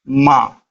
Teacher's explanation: अनुनासिक स्वर। ऐसे स्वर जिनका उच्चारण करते समय हवा मुख के साथ साथ नाक से भी बाहर निकलती है